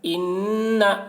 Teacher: نون کے اوپر تشدید ہے، اس لیے نون کی آواز کو ناک میں لے جا کر ایک الف کی مقدار کھینچیں گے، اس کو غنہ کہتے ہیں۔